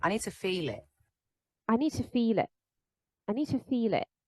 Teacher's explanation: I don't really hear a d and a t in need to, right? She doesn't say need to.